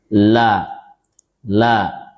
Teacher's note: huruf lam makhrajnya yaitu keluar dari ujung lisan yang didekatkan dengan langit-langit. atau ditempelkan ya.